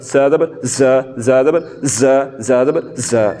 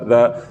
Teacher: तो हमने ज़ा को पढ़ते हुए सीटी की तरह आवाज़ निकालनी है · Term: सीटी की आवाज़